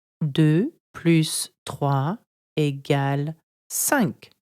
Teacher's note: There are two ways of pronouncing the word plus or plus. Plus is pronounced with an S when adding numbers together.